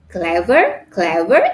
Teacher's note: it has two syllable again we put the stress in the first syllable CLA ver so we put the stress on the on the